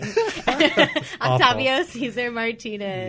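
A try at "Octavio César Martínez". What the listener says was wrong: So, with your Hispanic background, you went total Caucasian on the pronunciation there. OCtavio Cesar Roll the R. Roll the R, go home. Roll the R or go home.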